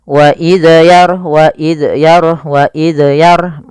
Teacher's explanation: Apabila ada huruf zal mati, maka tidak boleh mantul, tidak mantul. Banyak yang terjadi kesalahan adalah memantulkan zalnya.